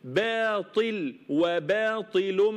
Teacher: الطاء مفخمه ما حدش يقول باطي لا باطي باطي باطي باطل ارقق الباء والالف الماديه وافخم الطاء وبعدين ارقق اللام الاخيره